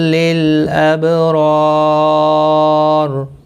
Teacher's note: خیر لل، باقی کسی بھی حرکت والے حرف کو کھینچنا نہیں، لام ساکن کو ہلانا نہیں۔ اب رار، با ساکن پر قلقلہ ہوگا اور را پر پڑھا جائے گا